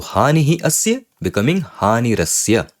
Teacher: Visarga changing into Rakara. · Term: Rutva Sandhi